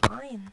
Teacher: Ain itu jelas lebih dalam daripada hamzah. Nah, ketika membaca ain, ini harus lebih jelas daripada hamzah.